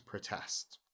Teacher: when it's a verb, to protest, then the stress falls on the second syllable. So it becomes protest.